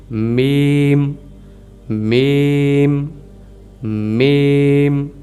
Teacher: इसे हमने अपनी ज़ुबान यानी कि मुंह से ही होंठों को मिला के अदा करना है। नाक में इसकी अदायगी यानी वॉइस को नहीं जाने देना, इसकी वाइब्रेशन नहीं जाने देनी।